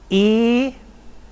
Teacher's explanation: So here are our horizontal lines as auxiliary lines, and the 2 further vowels are another front vowel, which would now be mid-high